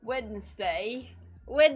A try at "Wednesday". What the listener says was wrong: Like, try again, American. There's a D in there. It's Wednesday.